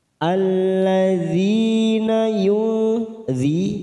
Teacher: nun sukun bertemu fa, ikfa hakiki, kita samarkan 3 ketuk